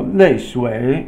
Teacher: 泪 is the falling tone, 水 is the falling then rising tone.